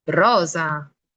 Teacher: aquí, por ejemplo, se pronuncia la S con un sonido sonoro. Ese tipo de sonido, cuando la S se marca más en cuanto a pronunciación, se le conoce como sonido sonoro.